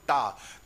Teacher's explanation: आपकी जो जीव्या है वो तालु के पीछे स्पर्श करना चाहती है, मूर्धा वाले स्थान पर। · तो टा वर्ग मूर्धा, जब भी आप टा बोलते हो तो जीभ आपकी उल्टी होके कहां स्पर्श करना चाहती है? मूर्धा में, तालु में नहीं स्पर्श करती। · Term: मूर्धन्य व्यंजन